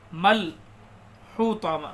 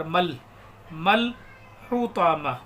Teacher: میم کے آگے جو الف لگ رہا ہے اس کو نہیں پڑھیں گے، ڈائریکٹ میم کو لام میں ملا دیں گے۔ ایسا الف یا واو جن پر زبر زیر پیش کچھ نہیں ہوتا ہے، جزم بھی نہیں ہوتی، ایسے الف واو یا کو نہیں پڑھتے ہیں۔